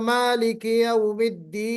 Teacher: नून पर वक्फ करते हुए हम आवाज को खींच कर रुकेंगे, वक्फ करते हुए अपनी आवाज को खींचेंगे, उसी खींचने का नाम मद है। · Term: मद्दे आरिज